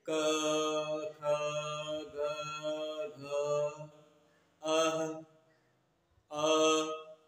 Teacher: इनका उच्चारण स्थान कंठ से होता है। कंठ से का मतलब हो गया कि डायरेक्ट जीभ साइलेंट होती है और वर्ण का उच्चारण फ्लो, उसका जो फ्लो है वो डायरेक्ट कंठ से साउंड बाहर आता है, यानी ध्वनि डायरेक्ट बाहर आती है।